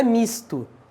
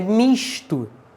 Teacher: Aqui no Rio de Janeiro, a gente usa o S chiante. Então não é misto, é misto.